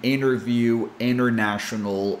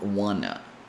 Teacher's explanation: But now we have NT between vowel sounds. And when this happens, T becomes silent